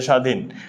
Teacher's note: শব্দের প্রথমে যদি বফলা থাকে তাহলে বফলার উচ্চারণ হবে না।